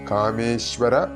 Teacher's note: മിക്ക ആളുകളും കാമേശ്വര എന്നൊക്കെ ചൊല്ലി പോകാറുണ്ട് അതിലൊക്കെ അർത്ഥം മാറിപ്പോകും ആയതുകൊണ്ട് കാമേശ്വര ശ പ്ലസ് വ ആണ് ഇവിടെ ശ സ അല്ല ശയാണ്